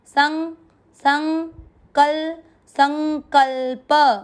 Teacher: आधा न को नाक से पढ़ना है